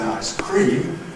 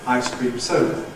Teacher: those of us who have end stress in <ˌice ˈcream> shift it in the compound <ˌice cream ˈsoda> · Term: stress shift